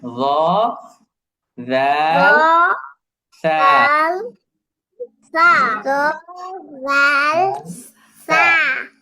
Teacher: এই তিনটি হরফ উচ্চারণের সময় জিহ্বার অগ্রভাগ দাঁতের আগার সাথে লেগে উচ্চারিত হবে। অর্থাৎ এই তিনটি হরফ যখন আমরা উচ্চারণ করব তখন আমাদের জিহ্বার এই অগ্রভাগটা এবং দাঁতের আগাটা একসাথে মিলিত হবে, একসাথে মিলিত হয়ে এই তিনটি হরফ সফট করে উচ্চারণ করতে হবে।